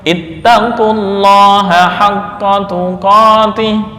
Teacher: huruf wawu pada mad ittaqu ya gugur